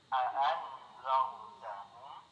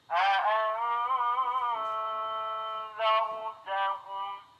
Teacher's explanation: Nun sukun bertemu huruf zal, hukumnya ikhfa. Yaitu menyamarkan nun sukun ke huruf zal disertai dengung seukuran 2 harokat.